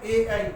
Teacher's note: कंठ से और तालु मिलाकर ए बोला जाता। और ऐ बोला जाता है। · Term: कंठ तालु